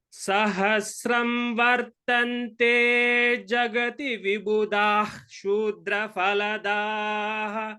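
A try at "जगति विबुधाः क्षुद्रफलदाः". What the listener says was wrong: Jagati Vibudhaha. The Visarga should be chanted completely before Ksha. Jagati Vibudhaha. Dha is Mahaprana there.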